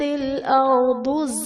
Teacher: اذا زلزلت الارض زلزالها، ارض میں را ساکن سے پہلے زبر ہے تو یہاں پر را کو پر پڑھا جائے گا، ضاد حرف مستعلیہ پر پڑھا جائے گا۔ زلزالہا میں الف سے پہلے زبر ہے، الف مدہ کا قاعدہ ہے، اور وقف کی صورت میں حرف مدہ یعنی الف مدہ، واو مدہ، یا مدہ تبدیل نہیں ہوتے، یہ حرف مدہ ہی پڑھا جائے گا۔